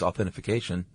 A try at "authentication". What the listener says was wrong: You added another syllable.